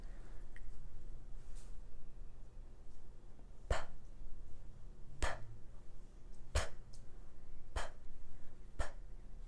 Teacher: P is a voiceless sound, which means you're not going to feel your vocal cords vibrating. P. So your mouth is closed.